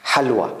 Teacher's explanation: you have to give a puff, then let the H sound come. Like it comes out with exhaling in air. Exhaling. Ha is a light exhaling. · this Ha is like not H, but a kind of H from throat. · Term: exhaled H